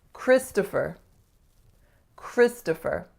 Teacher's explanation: So strongest syllable is the first, Chris, to, and then fur.